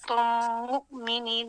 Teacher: یہاں پہ میم ساکن کے بعد میم آ رہا ہے تو ادغام شفوی بھی ہو سکتا